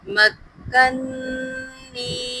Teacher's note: باقاعدہ نون کے اوپر جو تشدید ہے اس کے اوپر غنہ کیجیے گا